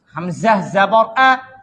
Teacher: حمزہ کی جو آواز ہے وہ گلے کے کہاں سے نکلے گا؟ نیچے والے حصے سے